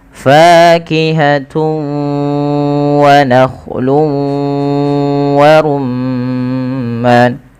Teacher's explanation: dengan huruf wau maka ini kita namakan dengan bacaan Idgham bighhunah cara membacanya yaitu memasukkan tanwinnya kepada huruf wau · Cara membacanya yaitu memasukkan tanwinnya kepada huruf waw, karena idgham itu artinya memasukkan, bi gunnah disertai dengan gunnah. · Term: idgham bi gunnah